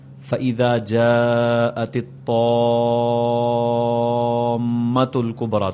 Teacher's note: اور اگر اس بڑے مد کے بعد جزم تشدید آ جائے، جس طرح فَإِذَا جَاءَتِ الطَّامَّةُ الْكُبْرَىٰ، تو اس کو 5 الف جتنا لمبا کیا جائے گا